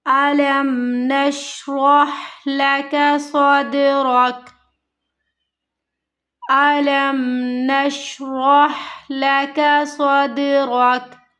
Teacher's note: हमज़ा को नहीं खींचना, लाम को हमें मीम के साथ मिलाना है